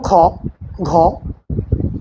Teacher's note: আর এই মহাপ্রাণ মহাপ্রাণ কোনটা যেটা উচ্চারণের সময় এ নিশ্বাসটা কি জোরে সংযোজিত হয়। যেমন খ এগুলো কি উচ্চারণ করতে গেলে নিশ্বাসটা জোরে সংযোজিত হয়